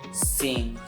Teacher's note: The consonant N is to ensure that to produce them, the back of the tongue touches the soft palate